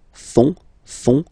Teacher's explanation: ils, plural, font, final T not pronounced